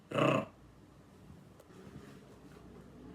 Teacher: com a língua indo de cima para baixo, bem rápido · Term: R forte